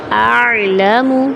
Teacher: اعلم یعنی تھوڑا سا چلا کے آواز کو بند کرنا ہے، توسط کی کیفیت ہے نا.